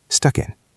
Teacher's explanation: Connect the K to the I. Stuck in. Stuck in traffic.